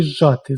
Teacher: Звук «з» уподібнюється до «ж», і чуємо ми подвоєний звук «ж». Але пишемо «зжати». · Два звуки взагалі починають звучати однаково, як у слові «зжати». Звук «з» уподібнюється до «ж», і чуємо ми подвоєний звук «ж»